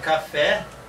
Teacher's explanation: eu tenho uma palavra de duas sílabas, em que a última é a mais forte. Aí eu tenho uma oxítona no português.